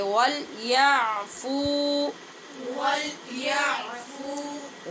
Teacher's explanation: عین کو وسط حلق سے جا کر ادا کریں گے